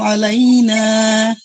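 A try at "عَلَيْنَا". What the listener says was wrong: আলাই আলাই ধরে রাখা যাবে না। ওই যে আমরা হরফিলিন শিখছিলাম, জবরের বামে ইয়া সাকিন বা ওয়াও সাকিন দ্রুত পড়তে হবে। আলাইনা।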